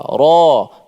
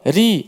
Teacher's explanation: Kadang-kadang tebal, kadang-kadang nipis. Ada baris atas tebal, ra. Baris bawah, ri. Nipis pula.